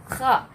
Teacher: Kemudian huruf yang keluar dari tenggorokan bagian atas ghain dan kha.